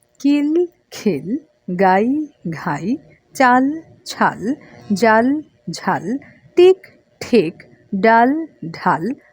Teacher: একটা শব্দের মধ্যে অল্পপ্রাণ, আরেকটার মধ্যে মহাপ্রাণ আছে। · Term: অল্পপ্রাণ এবং মহাপ্রাণ